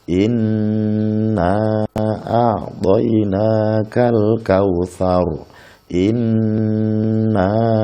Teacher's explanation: Di sini ada nun ditasdid, maka membacanya harus berdengung selama 3 harokat atau 3 ketukan.